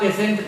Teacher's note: पेशेंट क्यों हुआ? क्योंकि टी के बाद IE आ गया है, टी तालव्य श का साउंड देगा